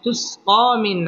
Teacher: নুন সাকিনের বামে আইন আসছে আইন ইজহারের হরফ অতএব এখানে গুন্নাহ ছাড়া স্পষ্ট করে পড়তে হবে